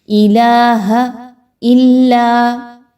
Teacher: अशहद अल इलाहा लाम के ऊपर मद्दा मद्दा है तो यहां पर इसको लंबा करते हुए पढ़ेंगे। हमजा अगले कलमे के शुरू में आ रहा है तो इसको पांच से छह हरकात के बराबर लंबा करेंगे। इलाहा इल्लाह इलाहा में जो अब लाम है उसको मोटा नहीं करना। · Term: बारीक